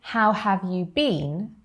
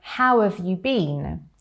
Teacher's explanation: how and have contract to make howv however and it's a lot faster it's a lot more natural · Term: connected speech, contractions and connected speech